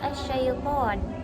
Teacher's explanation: atafasi menurut bahasa berarti meluas atau melebar sedangkan menurut istilah adalah menyebarnya atau meratanya udara dalam mulut ketika mengucapkan huruf syin · menyebarnya atau meratanya udara dalam mulut ketika mengucapkan huruf shin. Contohnya pada lafaz asy-syaiton. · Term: at-tafashi